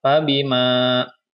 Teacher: Ini adalah mad tabi'i karena di sini ada huruf mad alif yang sebelumnya berharokah fathah. Ya, maka dibaca panjangnya 2 harokah.